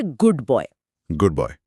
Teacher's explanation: जब हम इसे तेजी से बोलते हैं तो गुड के आखिर की डी ध्वनि बॉय की शुरुआत की बी ध्वनि से प्रभावित हो जाती है। डी और बी दोनों ही जोरदार व्यंजन है। लेकिन डी जीभ से और बी होठों से निकलता है। होठों को बी के लिए तैयार करने के चक्कर में डी भी बी जैसा बन जाता है। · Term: एसिमिलेशन